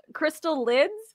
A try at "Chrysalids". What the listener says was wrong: Yeah, but it's all one word. Crystalids.